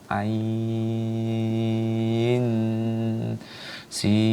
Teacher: Nah, ya, ain. Nah, itu mad lazim harfi mutsaqqal karena dia didengungkan dengan huruf setelahnya